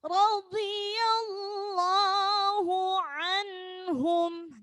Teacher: Lafaz Allah dibaca tafhim karena didahului huruf harokat fathah.